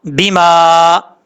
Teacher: یہاں پر الف کے اوپر مد منفصل ہے، 2.5 الف کے برابر اس کو لمبا کریں گے